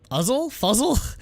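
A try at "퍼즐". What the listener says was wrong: It's pronounced puzzle in Korean anyway. They don't have an F sound.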